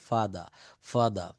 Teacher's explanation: ব্রিটিশরা ইউকেতে যারা আপনারা থাকেন আর এর উচ্চারণটা খুবই কম বলে